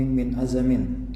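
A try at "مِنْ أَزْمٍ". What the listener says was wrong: Bukan min azamin, min azmin. Bisukuni zai, min azmin.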